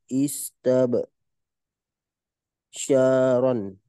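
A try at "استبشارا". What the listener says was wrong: Istib, not istab, the so istib syaron.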